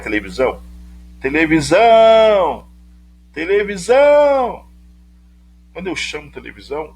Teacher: eu me demoro mais para anunciar a sílaba visão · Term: sílaba tônica